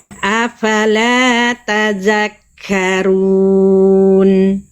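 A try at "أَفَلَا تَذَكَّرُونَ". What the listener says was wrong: Ronya tebalkan. R domah itu harus tebal. Angkat pangkal lidah.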